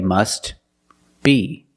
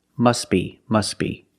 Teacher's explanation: If you have two words together and you're linking the words, which we do, the T is also silent.